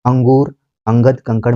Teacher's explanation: अनुस्वार क्या है, स्वर के बाद आने वाला व्यंजन है और इसकी ध्वनि केवल नाक से निकलती है